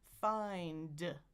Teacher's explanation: But the way you articulate it, still think about it, is the top teeth and the bottom lip, and they're making friction right between them.